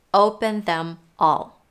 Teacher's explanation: is open them all what might be confusing here is that the th in the word them is dropped · What might be confusing here is that the TH in the word them is dropped. Yep, native speakers in the words such as them, their, that, when they're in the middle of a phrase but not at the beginning, might drop the TH.